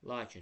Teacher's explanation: lakin sözündə biz a-nı uzadırıq. A saytı uzun tələffüz olunur. Həm də ki, vuruğu elə a-nın üzərinə düşür.